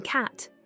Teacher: vowels a as in cat is a low front unrounded vowel the tongue is positioned low and towards the front of the mouth and the lips Remain unrounded the sound is relatively open with the mouth wide and the